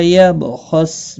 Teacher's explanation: خا مستعلیہ ہے پر پڑھا جائے گا